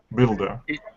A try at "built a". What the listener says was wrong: It would not be builda. It would be builta. The T would not fuse with the A as in at all. And there's some reasons for this that are kind of a little complicated.